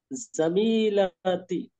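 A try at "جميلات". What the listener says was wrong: আরো একটু টেনে পড়তে হবে, জামিলাতি।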